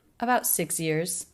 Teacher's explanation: Pitch goes up a little bit at the end.